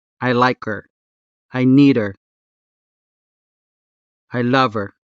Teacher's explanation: it's like dropping the H in her when you say, I like her, I need her, I love her. Now, if you want to clearly and audibly sound the unstressed ha consonant in these words, that is completely okay.